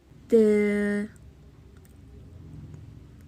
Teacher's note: ت، زبان کی نوک اور ثنایا علیہ کی جڑ سے ادا ہوتا ہے۔ ت، زبان کی نوک آگے کے دو دانتوں کے جو جڑ ہوتی ہے ان سے لگتی ہے۔